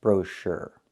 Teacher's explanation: Put the stress on the second syllable and make the sound like in burger